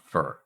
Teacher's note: in fur the sound that we make in fur is so this is a vowel sound we're not doing a vowel plus consonant we're not saying Fair far Fair we're just making one sound